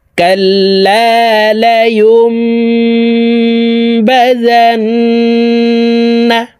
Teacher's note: কাল্লায়ুম বাজান এই ছোট্ট মিমের সাথে গুন্নার সহিত পড়তে হবে কারণ নুন সাকিনের পরে এখলাবের হরফ বা আসলে এই মিম দ্বারা পরিবর্তন করিয়া গুন্নার সহিত পড়িতে হয়